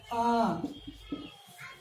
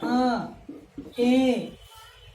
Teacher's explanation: अनुनासिक। इसको बोलने में मुख और नाक दोनों की सहायता लेनी पड़ती है। मुख सहित नासिका।